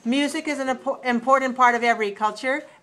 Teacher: all right so it goes up rises and then it falls it rises on the most important word and then it falls